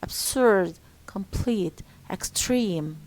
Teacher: We stress the second syllable in adjectives for example absurd complete extreme